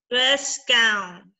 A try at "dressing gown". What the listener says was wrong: No, what's the ing in the dress?